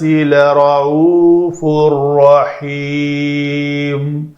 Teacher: نون جو نون کی آواز ہے وہ اس را کے اندر مکمل مدغم ہو گئی، پڑھنے میں باقی نہ رہی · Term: ادغام کامل